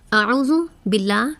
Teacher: باللہ میں اللہ کے لام کو باریک پڑھیں گے